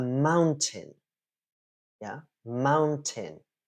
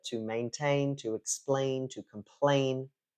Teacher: it's on the first syllable whereas in those verbs that we heard earlier to maintain to explain to complain the stress is on the second syllable